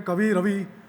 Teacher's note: રસ્વ એવા વર્ણોનો દીર્ઘ ઉચ્ચાર રૂળ થઈ ગયો છે દાખલા તરીકે કવિ રવિ વગેરે જેવા શબ્દોમાં વીનો ઉચ્ચાર રસ્વ કરવો મુશ્કેલ છે એથી એનો દીર્ઘ ઉચ્ચાર બોલચાલમાં રૂઢ થઈ ગયો છે